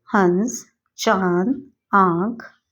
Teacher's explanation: चंद्र बिंदु का प्रयोग किया जाता है इसे अनुनासिक कहते हैं इसका उच्चारण नाक और गले दोनों के सहयोग से होता है